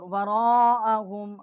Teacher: را الف زبر مد را، یہ بڑی مد ہے، 4 الف جتنا یہاں آواز بلند کی ہے، یوما ثقیلا، اور یہاں بھی ہم نے غنہ کیا ہے، اور ثقیلا یہ یہاں پہ ہم نے وقف کیا ہے، ایک الف جتنا آواز یہاں بلند کی ہے۔